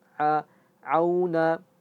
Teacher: Au auna ya auna ain itu jangan sampai dia masuk ke ke hidung atau khaisyum enggak boleh karena a itu dia ada berada di tengah tenggorokan